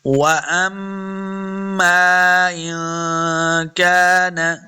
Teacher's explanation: واو کو جب پڑھیں گے دونوں ہونٹ گول کرنے ہیں. وَأَمَّا میم کے آگے الف ہے اور مد بھی ہے تو ہم نے اس کو لمبا کرنا ہے.